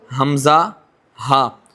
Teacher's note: یہاں سے شروع حلق یعنی کہ جو سینے کی طرف حصہ ہے وہاں سے حمزہ اور ہا نکلے گا